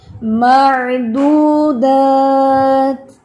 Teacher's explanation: تا کے اندر ہمس ہے نا، تو وہ ہمس جو ہے نا وہ آپ کا فیل ہونا چاہیے